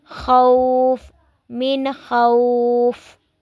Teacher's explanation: جو مد لین ہے اس کو ہم نے 2 4 یا 6 الف کے برابر اس کو ہم نے کھینچنا ہے، لمبا کرنا ہے